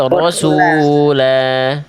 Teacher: dibaca jadi harokatnya vokal, jadi panjang 2 harokat ya, vokal A-nya namanya mad iwad